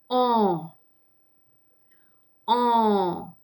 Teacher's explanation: The sound is going on through the nose. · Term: nasal vowel